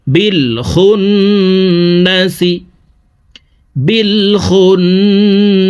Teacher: ওয়াজিব গুন্নাহ দেখুন হরকতের বামে নুনের উপরে তাসদিদ আছে এই কারণে পেশওয়ালা খটি তাসদিদওয়ালা নুনের সাথে 3 সেকেন্ড পরিমাণ গুন্নাহ করে পড়ব